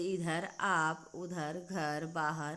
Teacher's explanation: मुंह से वर्णों का उच्चारण किया जा रहा, नाक की सहायता नहीं ली जा रही है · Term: निरनुनासिक